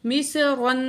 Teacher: مصرن، میم زیر سواد، مس، سواد کو موٹا کر کے پڑھیں گے، را کو بھی موٹا کر کے پڑھیں گے